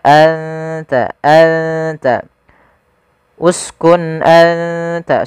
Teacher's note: Ujung lidah menempel dengan gusi atas kita atau apa? Perbatasan antara gusi atas dengan gigi seri atas. Maka anta anta uskun anta sambil ditahan eng ditahan dengungannya dua harakat. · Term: huruf ta